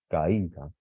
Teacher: ¿Veis cómo el acento, la intensidad recae sobre la I? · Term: vocal cerrada tónica